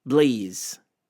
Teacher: when Arabic speakers often say pa, they say ba instead